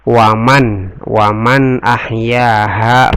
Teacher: izhar karena nusukun ketemu dengan alif, bacanya dengan jelas